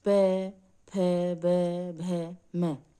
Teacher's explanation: प वर्ग होता है, जो कि ओष्ठ से बोला जाता है, यानी होठों से बोला जाता है। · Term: ओष्ठ्य वर्ण